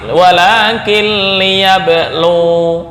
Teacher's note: Lu panjang mat satu alif ketika wakaf. Tapi ketika wasal wawu pendek, satu harokat doang.